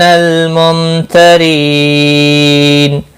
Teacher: مد العارض وقفی ہوگا، 3 سے 5 الف کے برابر کھینچ کر وقف کریں گے